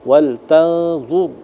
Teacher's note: karena D itu hurufnya tandanya dammah, maka ro yang sukun itu dibaca tebal. Walzur jadi mulutnya dimuncungkan agar sempurna tebal rnya itu.